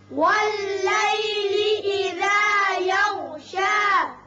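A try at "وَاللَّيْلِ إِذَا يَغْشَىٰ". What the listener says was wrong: غین کو ذرا پر کر کے پڑھیں گے. وقت کی صورت میں یہ شا ہی رہے گا، وصل کی صورت میں بھی شا رہے گا، ایک الف کے برابر. واللیل اذا یغشا.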